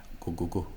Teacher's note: G which is kind of a neutral English G uh whereas the broad G in Irish is deeper further back the tongue is further back